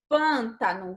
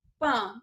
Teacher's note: Você abre, mas não abre como em fábula. Então, o timbre, o som que sai da nossa boca é um som mais fechado.